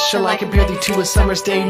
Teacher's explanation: Unstressed, stress, 5 times flow iambic